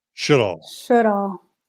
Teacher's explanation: emphasis on the first syllable